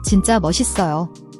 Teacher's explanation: The JJ in jinja is a tense, double J sound, like a strong J in jazz, not a soft J.